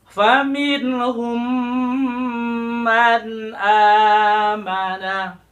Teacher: Lalu bertemu dengan mim lagi, huruf mim pada kata man amana. Maka hum dengan man amana, mimnya disatukan, dilebur. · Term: idgham syafawi